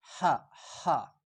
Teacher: ये नरम हा है, सिर्फ गले पे जोर लगा के